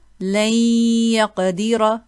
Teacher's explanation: we still hear the ghunna from the noon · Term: incomplete merge